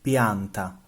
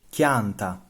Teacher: Latin pl became Italian pi, but in Sicilian it becomes chi